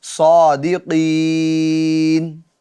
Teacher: نون پر ہم اپنی آواز کو اور اپنی سانس کو توڑ کر رک جاتے ہیں، اسی کو کہتے ہیں وقف، یعنی صادقین۔